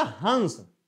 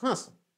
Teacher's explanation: जब हम अनुस्वार का उच्चारण करते हैं तो हमारे मुंह से अधिक हवा निकलती है नाक से कम निकलती है